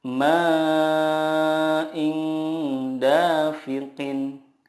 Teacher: menyamarkan nun sukun dan disertai gunnah 2-3 harokat. Yang dimaksud dengan menyamarkan di sini adalah ketika kita mendengungkan atau menyamarkan nun sukun itu, lidah kita sudah siap ke huruf berikutnya. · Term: ikhfa hakiki